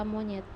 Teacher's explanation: direalisasikan sebagai bunyi E tengah bawah tak bundar apabila berada pada silabel tertutup